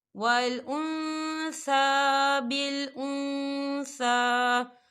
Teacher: ہم نون ساکن کی آواز کو ناک میں چھپائیں گے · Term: اکفا